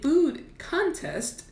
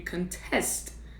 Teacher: So with a food contest, the stress is on the first syllable, but when you want to question something or challenge something, you contest. Now the stress is on the second syllable.